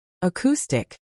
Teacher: Acoustic is pronounced slash k.stick slash, stress on the second syllable